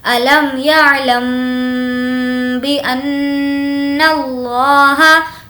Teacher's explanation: اس لام کو موٹا پڑھیں گے کیونکہ لفظ اللہ کے لام سے پہلے زبر ہے · اب یہاں پر با ہے میم ساکن کے بعد تو یہاں پر ہوگا ادغام شفوی. میم ساکن کے بعد اگر با ہو تو ہمیں غنہ کرنا ہے. الم یعلم بان اللہ، نون پر تشدید ہے، غنہ کریں گے.